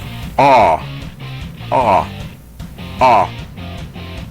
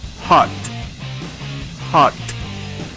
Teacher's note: es un sonido que hacemos como diciendo o pero abrimos la boca al mismo tiempo y decimos Oh a a como en las palabras hot hot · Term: sonido corto de la letra o, sonido corto de la letra O